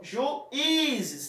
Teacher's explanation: a conjuntura do I você fala numa tonicidade grande ao invés das outras